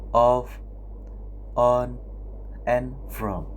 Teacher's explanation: technically named a open back and rounded vowel. In this case, your tongue is low and at the back of your mouth. Rounded here means your lips is making a round shape and your mouth is open a little bit.